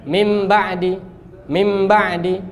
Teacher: ini bacanya nun ubah jadi mim disertai dengung. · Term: iqlab